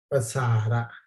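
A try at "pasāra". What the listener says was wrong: Yes, the short R we have a pasara. Pasara, it can mean spreading or extension, but here is long R.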